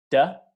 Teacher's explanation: When you make a D, duh, it's behind your teeth, not touching them.